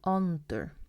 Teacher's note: if you're from Suðuroy or somewhere else, under, with a Danish A